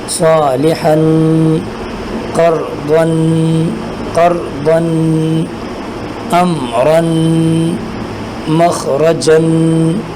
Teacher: آخر میں تنوین کو ادا کرتے ہوئے آواز کو ناک کے اندر لے جا کر ادا کرنا ہے۔ غننے کی آواز آپ نے پیدا کرنا ہے۔